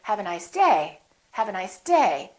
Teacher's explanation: my voice is still going down even though i'm stressing the word the pitch is still down · I'm still going to emphasize the word day, but I'm not going to make my pitch go up. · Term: falling intonation